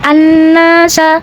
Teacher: Kemudian hukum alif lamnya dinamakan hukum alif lam syamsiyah karena alif lam menghadapi hukum syamsiyah yaitu nun. Maka cara bacanya alif lam tidak kita baca atau disebut dengan idgham syamsi · Maka cara bacanya alif lam tidak kita baca atau disebut dengan idgham syamsi, seperti an-nasa.